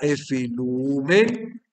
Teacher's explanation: si yo voy a hacer la contracción entre epsilon y omicron, me va a quedar un diptongo U